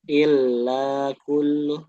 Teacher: Ya, jadi lamnya jangan terlalu cepat. Karena dia punya sifat mengalir ya.